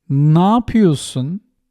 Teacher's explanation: We merge ne and we omit ye and we merge e and a and say ne yapıyorsun?